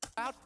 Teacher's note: he's going to say out with a glottal T